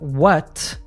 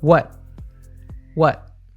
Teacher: In American and many variants of British English, we use a glottal T in what. We cut the sound off at the back of the throat.